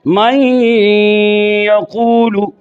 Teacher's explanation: یہاں نون کی صفت غنہ باقی ہوئی، یعنی نون کو یا میں داخل کیا اور غنہ کو باقی رکھا، یہ باقی رکھنے کو ناقص کہتے ہیں۔ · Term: ادغام ناقص